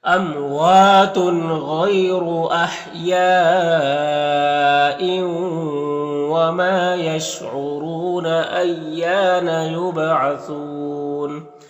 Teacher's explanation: با حروف قلقلہ میں سے تو با میں قلقلہ کریں گے. اور یہاں پر وقف کی صورت میں مد عارض وقفی ہوگا تو اس طرح سے پڑھیں گے.